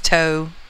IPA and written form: toʊ (toe)